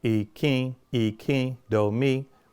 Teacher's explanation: The first eye is a low tone. The second eye is a high tone. · the N at the end of Ìkín is actually nasalized, which means you do not touch the top of your mouth with your tongue